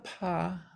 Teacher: when I make a paw my vocal cords don't start vibrating until after I open my lips can you see that okay there's no vibrations until these nothing